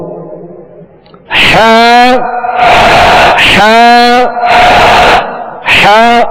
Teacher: ہا کا جو مخرج ہے وہ حلق کے درمیان والے حصے سے ہا ادا ہوتی ہے